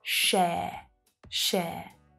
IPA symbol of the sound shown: ∫eə